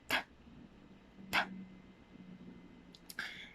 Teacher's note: And this consonant is a voiceless sound because you cannot feel vibration if you produce the sound, and this would be a alveolar sound because the tip of your tongue will be touching your alveolar ridge